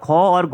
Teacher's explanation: महाप्राण व्यंजनों के उच्चारण में भी अधिक समय लगता है और अधिकतर ऐसा होता है कि इनके उच्चारण के अंत में हमें ह की ध्वनि सुनाई देती है